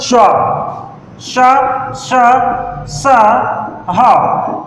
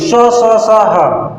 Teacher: देखिए ऊष्म संघर्षी व्यंजन कौन से होते हैं, जिसमें से ऊष्म मतलब कि गर्म हवा निकले मुंह से, जैसे कैसे निकलेगा श्वा, श, श, स, ह। इनमें क्या होता है वायु मात्रा काफी होती है, महाप्राण होते हैं, तेजी से काफी हवा निकलती है, गर्म हवा निकलती है